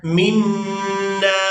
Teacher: نون مشدد پر غنہ کیا جائے گا